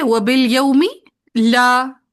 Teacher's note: حمزہ کا زبر پیچھے لام کو دے دیں گے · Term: نقل الحرکت